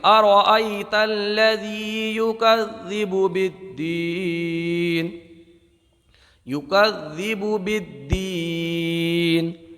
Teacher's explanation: یہاں پر ذال کو ایک الف کھینچ کر کے پڑھیں گے کیونکہ ذال پر کھڑا زبر ہے۔ کھڑا زبر حروف مدہ کے قائم مقام ہوتا ہے۔